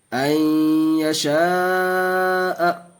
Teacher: دو پیش تنوین کے بعد یا آیا، اور ہر جگہ دیکھیے دو زبر دو زیر دو پیش کے بعد نون ساکن کے بعد یا آ رہا، تو یہاں گنہ کر کے پڑھیں گے . این یشاء حمزہ یا زبر این یا زبر یا این